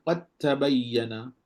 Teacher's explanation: dal dengan ta datang dari makhraj yang sama, maka sekarang ni kita perlu idghamkan dal ke dalam ta. · Baca ta sahaja. Tak ada lah bunyi qalqalah semua, tak ada lah. Bunyi ta je lah.